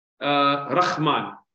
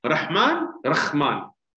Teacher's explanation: Now here, they've changed the ha into a kha, very clearly.